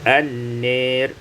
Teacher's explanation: imalatu fathatin nun wal alif, dibaca imalah fathah nun dan alif menjadi an-nir.